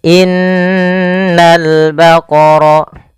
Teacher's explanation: menahan dulu suara n-nya sepanjang 2 harokat baru dilepas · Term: gunnah